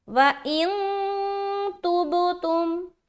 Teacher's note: इख्फा कर दिया, क्योंकि आगे जो हर्फ है उसको मैंने देखा है वो ता है, और ता आने की सूरत में इख्फा होता है, इसीलिए मैंने इख्फा कर दिया।